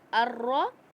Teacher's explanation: حمزہ پہ کھڑا زبر ہے، اس کو ہم کھینچ کے پڑھیں گے الف کی مقدار، کیونکہ حروف مدہ کے علاوہ یہ جو حرکات ہیں کھڑا زبر کھڑی زیر الٹا پیش، ان کو بھی ہم 1 الف کی مقدار کھینچ کر پڑھتے ہیں.